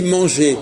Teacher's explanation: quand on dit manger on n'entend pas le r